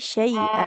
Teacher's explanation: jadi hamzahnya jangan cenderung ke ain ya. Jangan syai'a, tapi syai'a di pangkal tenggorokan.